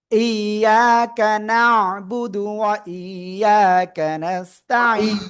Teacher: থেমে পড়লে সাকিন, আর তার আগে এক আলিফ মাদের জন্য 3 আলিফ টেনে পড়বো